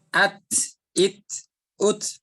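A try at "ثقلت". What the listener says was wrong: Jangan. Itu masih ada ininya ya. S-nya. Masih ada desisnya? Masih ada desisnya? Jangan ada S-nya.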